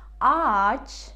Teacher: Arkadaş, baba, baba, ceviz, j harfi ya, ceviz, çocuk, ç harfi ya, çocuk, ders, ders, ev, fare, gül, gül, ağaç, ağaç деген сөзде достар байқасаңыздар yumuşak g harfi тұр ya, яғни ağaç дегенде өзінің алдында тұрған аны созады да өзі оқылмайды